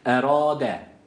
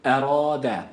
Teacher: ra kalındır a sesi verdik sadece bir elif miktarı uzattık